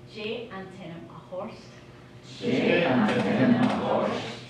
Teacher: We put an S sound in between the R and the T, even though you can't see it, but that's a rule that always applies. · So that's for what is your name, J, and tenant a horst, because you put the SH sound in between the R and the T